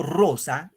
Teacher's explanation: cuando digo rosa, el acento va en ro. Entonces de la vocal lo jalo para acá.